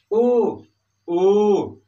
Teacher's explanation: यहां पर हमारे ओठ सट नहीं रहे हैं, लेकिन हमारा जो ओठ है वो आगे की ओर निकल रहा है, आगे की ओर बढ़ रहा है और गोलाकार स्थिति में आ रहा है। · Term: छोटा ऊ और बड़ा ऊ